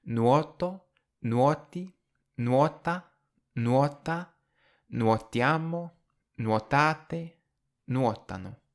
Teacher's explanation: listen for the stress, how it's on the same syllable for I, you, he, she, and they, and then it's on the next syllable for we and you in the plural